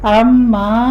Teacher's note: عما میں عین وسط حلق سے ادا کرنا ہے